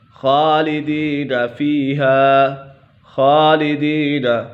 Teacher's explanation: یہاں پر خا حروف مستعلیہ میں سے ہے تو یہ پر ہوگا۔ اس کے بعد یا مدہ ہے، یا سکن سے پہلے زیر ہو تو یا مدہ ہوگا۔